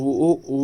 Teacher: व को कैसे बोलते हैं? दंत ओष्ठ से बोलते हैं